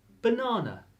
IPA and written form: bəˈnænə (Banana)